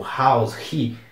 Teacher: quando o h começa e a palavra muitas vezes ele tem aquele som de R